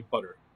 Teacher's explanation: do you say butter or do you say butter right because that butter like most Americans say isn't even a t it's what you call a flap